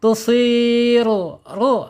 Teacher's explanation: Awas ro dibaca tebal nih. Harus dibaca tebal ya.